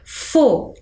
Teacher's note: Temos 3 sílabas e a sílaba com maior pronúncia é o G. Então, olha, quando eu falo sorvete, foguete, elas têm a mesma sonoridade, a pronúncia mais forte ali naquela sílaba do meio, mas na escrita eu observo uma sequência igual de escrita, o E, o T e o E.